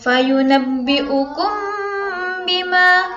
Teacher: mim mati bertemu dengan huruf ba membacanya harus didengungkan selama tiga harokat atau tiga ketukan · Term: ikhfa syafawi